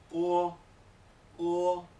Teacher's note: Va desde la vocal un poco más pequeña hasta formarse del todo en la O. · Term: la vocal O